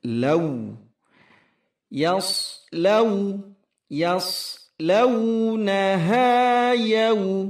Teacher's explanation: ini madalin harus menggunakan u. Law, jangan dibaca law, tetapi u monyong.